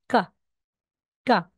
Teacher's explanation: ibig sabihin hindi siya aspirated no may tense yung sound